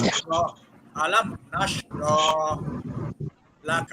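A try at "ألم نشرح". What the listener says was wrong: এবার তো র তো হয়ে গেল, হাতে তো হলো না, হাত শব্দটা হরফটা ধরে রাখতে হবে। র।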